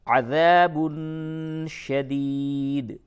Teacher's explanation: تنوین کے بعد شین ہے، یہاں پہ اخفا ہوگا